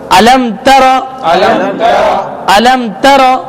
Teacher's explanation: میم کے بعد لفظ تا آ رہا ہے، جی اس لیے اظہار شفوی اس پہ غنہ بھی نہیں کریں گے